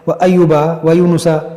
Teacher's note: دیکھیے دوستو، یہاں پر یہ واو مدہ ہے، واو ساکن سے پہلے پیش ہے، اس کو کھینچیں گے